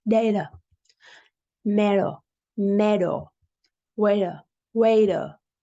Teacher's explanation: When there's a T between vowels, A, E, I, O, U, Americans tend to pronounce it the same way as they do when there's a D between vowels. This is called a flap T. · The first D is very strong, but the T pronounced as a D is softer.